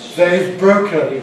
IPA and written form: ðeɪv ˈbrəʊkən (they’ve broken)